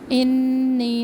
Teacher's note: نون مشدد ایک الف کے برابر مد ہے